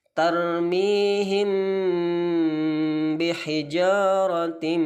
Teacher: mim sukun bertemu ba yang kita sebut dengan ikhfa syafawi